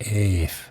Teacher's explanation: Well, anyway, what I found out at the online etymology dictionary is that Eve, in terms of evening or at night, comes from the Old English term efen, which I think I'm pronouncing correctly, It's just that we've lost the terminal N over time, so it's just Eve